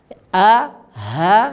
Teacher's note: Di situ terbagi ada 3 makhraj, yaitu bagian pangkal tenggorokan, tempat keluarnya hamzah dan ha